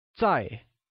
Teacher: again translates as tsai which carries a falling tone